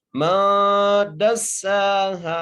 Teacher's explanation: پر غنہ کرنا ہے، ما، دال کو سین سے ملانا ہے، سین کو سیٹی سے پڑھنا ہے، اور سین کو ایک الف مدار کھینچ کے پڑھنا ہے ، ہاں کو بھی ایک الف مدار کھینچ کے پڑھنا ہے،